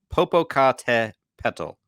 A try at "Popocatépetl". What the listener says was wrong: I think you're saying it correctly. You're just, your emphasis on the syllables might be off. The syllables.